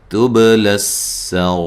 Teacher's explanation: تبل السرائر، تا کو باریک با پہ قلقلہ لام کو باریک پڑھنا ہے اور را کو موٹا ادا کرنا ہے، سین پہ باریک سیٹی کی آواز آنی چاہیے